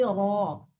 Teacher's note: ro-nya belum ditebalkan, jangan ra tapi ro